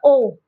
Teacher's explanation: इसका होता है गले और होठों से उच्चारण होता है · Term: कंठोष्ठ